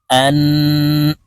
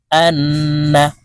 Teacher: নুনের উপরে তাসদি আছে তাই এই হামজা নুনের সাথে গুন্নাহ করে উচ্চারণ করব